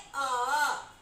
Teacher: अ में देखिए कि जीभ बीच में ही रहता, नहीं आगे नहीं पीछे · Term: मध्य स्वर